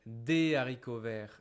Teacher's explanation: Haricot is part of exceptions words where we don't do liaison.